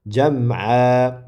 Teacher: Buni jam'an deb o'qimaymiz, balki jam'a deb vaqf qilamiz, ya'ni mad bilan cho'zamiz.